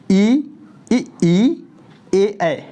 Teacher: उच्चारण जो होता है जीभ के अगले हिस्से से होता है, जीभ के आगे वाला हिस्से से होता है, उसको बोलते हैं अग्र स्वर।